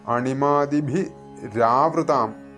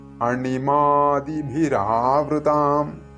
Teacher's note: വിസർഗം കഴിഞ്ഞിട്ട് ആ വരുന്നതുകൊണ്ട് അവിടെ ഈ നേരത്തെ പറഞ്ഞതുപോലെതന്നെ വൃത്തം ഭംഗം വരാതിരിക്കാനആയിട്ട് വിസർഗം മാറ്റി അവിടെ ര ചേർത്തിരിക്കുകയാണ് അപ്പോ അതുകൊണ്ട് അണിമാദിഭി രാവൃതാം ശരിക്കും ഇങ്ങനെയാണ് തെറ്റിച്ചു ചൊല്ലാറുള്ളത്. അണിമാദിഭിരാവൃതാം ഭിരാവൃതാം എന്നൊക്കെ